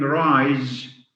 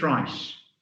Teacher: in some languages, they don't have a z sound. So instead of saying rise, they always make it rice.